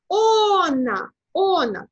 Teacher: ми маємо ставити наголос на передостанній. А передостанній склад – це є «о». Відповідно, ми прочитаємо «она», «она», так?